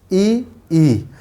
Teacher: तो जब हमारी जिह्वा ऊपर के भाग को टच करती है तो जो वर्ण निकलते हैं जब उनको बोलते हैं और जिह्वा उस स्थान को टच करती है, जैसे मान लीजिए हमने बोला ई, तो हमारा जो जीभ है ऊपरी जो है छत पे टच करता है तो उसको क्या कहा जाता है? तालव्य।